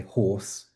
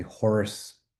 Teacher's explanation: It's a real rhoticization of the vowel horse.